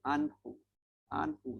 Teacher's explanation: Bertemu dengan huruf ha. Ha huruf halkum. Maknanya kita bunyi terang.